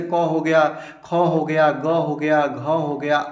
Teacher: सबको हम लोग दोस्तों कंठ ध्वनियां बोलते हैं। याद रखेंगे इसका उच्चारण हमारे कंठ से होता है।